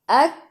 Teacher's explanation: kaf ada sukun dan lepas nafas sikit sahaja. Sebab sifat huruf kaf hamas.